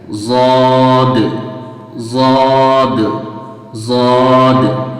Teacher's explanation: زبان کی جو سائڈ ہوتی ہے اس سائڈ اور اوپر کی ڈاڑھوں سے مل کر کے یہ ضاد نکلتا ہے